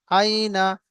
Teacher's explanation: নুন জবার না আইনা ইয়া সাকিন তার ডানদিকে জবর এসছে ইয়ালিন ইয়ালিনকে নরম আওয়াজের সাথে তাড়াতাড়ি পড়তে হবে টান দেয়া নিষেধ নুনের উপরে জবর এসছে জবরটি হল হারাকাত হারাকাতকে তাড়াতাড়ি পড়তে হবে